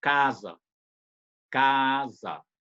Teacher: o A em sílaba tônica, é o aberto mesmo. Quando ele não está em sílaba tônica, ele pode ser mais fechado.